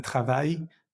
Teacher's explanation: esa L de travail no se pronuncia